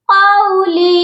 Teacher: قاف کے ساتھ واو لین ہے، اس کو ہم نے کھینچ کر نہیں پڑھنا